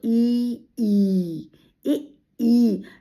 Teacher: जैसे कंठ से तो कंठ से अ आ स्वर कंठ से तालव्य जब जीभ ऊपर लगती है तो इ ई इ ई जीभ के पीछे का हिस्सा ऊपर तालु में लग जाता है तो ये तालव्य होता है।